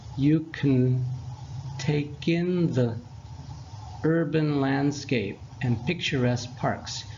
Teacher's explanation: you'll sound better if you don't pronounce the vowel in can.